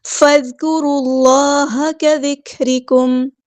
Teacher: فا کو ہم نے دال کے ساتھ ملا دینا ہے، حمزۃ الوصل ہمارا ڈراپ ہو جائے گا، دال باریک نرمی سے ادا کرنا ہے، کاف بھی باریک ادا کرنا ہے، اور را ہمارا ہیوی پورا ادا کریں گے، اللہ کا جو لام ہے یہاں پہ ہیوی موٹا ادا ہوگا، را کو ہم نے لام کے ساتھ ملا دینا ہے، حمزۃ الوصل ہمارا ڈراپ ہو جائے گا۔